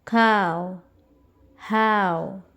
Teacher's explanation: a is longer in duration and O is shorter and unstressed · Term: diphthong